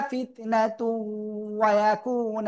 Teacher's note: ফিতনাতু তানমিনের পরে ওয়াও ইদগামে বা গুন্না, গুন্নার সাথে মিলে পড়বো